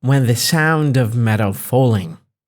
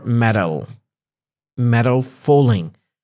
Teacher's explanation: I'm not stressing the G here so if you notice here I'm not saying the G I'm just distressing it and that's for a good reason